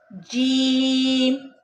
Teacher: ان میں فرق زبان کے درمیان کا تالو کے ساتھ چپکنے اور نہ چپکنے کا ہے۔ جیم میں زبان تالو کے ساتھ چپک جاتی ہے۔ · جب زبان کا درمیان اوپر تالو کے درمیان سے لگتا ہے تو جیم ادا ہوتا ہے۔